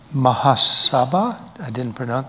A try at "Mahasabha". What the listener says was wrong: The accent's on the wrong part. Mahasabha? Mahasabha.